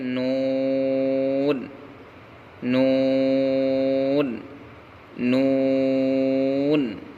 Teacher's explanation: نون نون نون کا مخرج نون کا مخرج زبان کا کنارہ اور اوپر کے دونوں دانتوں کے مسوڑے، زبان کا کنارہ اور اوپر کے دانتوں کے مسوڑے سے نون ادا ہوتا ہے